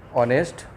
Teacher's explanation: then second example, ऑनेस्ट, first letter क्या है, H, but what it sounds, ऑनेस्ट, ओ sound आता है